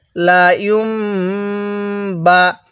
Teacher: ইয়া মিম পেশ ইউম, বা জবর বা, লা ইউম বা। দেখুন, মিম সাকিনের পরে বা থাকলে সেখানে গুন্নাহ করতে হয়, এজন্য আমরা এই মিমটিকে গুন্নাহ করে পড়ব।